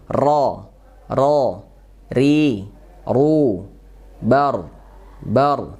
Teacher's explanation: Ujung punggung lidah. Jadi di ujung lidah punggungnya menempel ke gusi atas. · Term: huruf ro